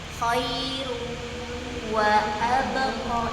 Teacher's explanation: K tadi contohnya walaupun tutup hidung suaranya ngalir harusnya saat tutup hidung suaranya hilang sedikit sebelum wau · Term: idgham